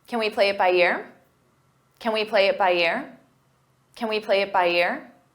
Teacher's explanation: When it's an auxiliary verb, we pronounce it as kin, unstressed, because the main verb is what you hear